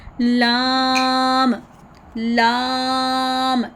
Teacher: लाम में ज़ुबान की नोक को हमने ऊपर दांतों के मसूड़ों के हल्की से लगानी है और आवाज़ नरमी के साथ निकालेंगे।